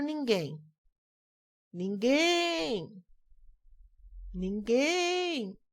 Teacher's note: o guem é a sílaba mais forte. É a sílaba tônica.